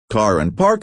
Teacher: The biggest difference from RP is that GA is rodic. The R sound is always clearly pronounced. So, car and park have that hard R sound at the end. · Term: rhotic